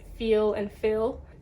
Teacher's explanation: Brazilians will say both of them feel, because to them it sounds so similar, but to the English speaker there's a good difference there.